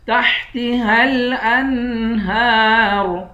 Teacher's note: ہا کو لام سے ملائیں گے، ہا کو الف اور اس الف سے نہیں ملائیں گے۔ تحتها الانہار، ہا پر کھڑا زبر ہے، اس کو ایک الف کی مقدار کھینچ کر پڑھیں گے، آخر میں را ہے، را کو موٹا پڑھیں گے۔